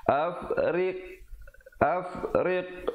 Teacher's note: Jangan berikan lantunan pada huruf ghain. Ghain bukan huruf qalqalah.